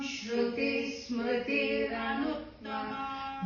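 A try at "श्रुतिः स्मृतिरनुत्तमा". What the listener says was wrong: Don't take a break there. Shruti, Smruti, Ranuttama.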